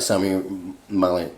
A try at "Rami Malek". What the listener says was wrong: Rami Malek. Did you mess up your S's and your R's?